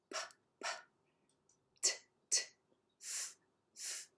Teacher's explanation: So if we say p, p, t, t, f, f, and we put our fingers right here, we don't feel the vibration in our fingers. We're not using the vocal cords. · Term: voiceless sounds